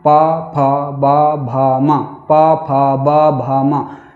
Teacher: प को बोलने के लिए जो दोनों ओठ जब मिले हुए होंगे उसको खोलना ही पड़ेगा। प को बोलने के लिए पहले आपको मिलना पड़ेगा और ओठों को मिलाना पड़ेगा और फिर उसके बाद ओठों को खोलना पड़ेगा। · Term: प वर्ग